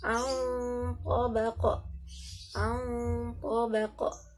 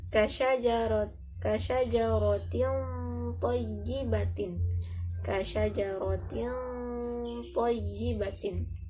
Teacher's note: Dan kasyajaratin thayyibatin, bukan kasyajaratin thayyibatin. Jadi bunyi nun mati atau tanwinnya disamarkan dan langsung dimasukkan kepada huruf setelahnya. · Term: ikhfa